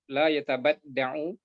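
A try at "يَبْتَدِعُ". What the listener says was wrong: Bukan yatabad. Yabtadi'. Dari ibtada'a yabtadi'u.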